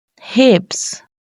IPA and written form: hɪps (hips)